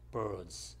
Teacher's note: 빨리 할 때는 birds 이렇게 해서 d 발음을 하지 않죠.